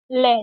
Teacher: पार्श्व यानी कि बगल में से हवा निकलेगी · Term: पार्श्विक व्यंजन